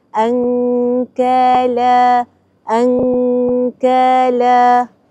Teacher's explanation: Perkara kedua adalah nun mati selepasnya kaf. Nun mati selepasnya huruf kaf. Jadi kita baca dengan ikhfa.